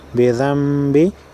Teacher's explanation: नून साकिन के बाद बा है लिहाजा गुन्ना होगा